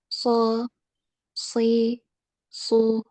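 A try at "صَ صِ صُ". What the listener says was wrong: Tebalkan lagi. So, naik ya, pangkal lidahnya coba dinaikkan dan permukaan lidah ya.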